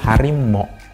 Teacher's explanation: jadi diftong aw berubah menjadi monoftong